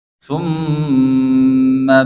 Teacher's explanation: pada huruf mim yang bertasydid tumma ini dibaca ghunah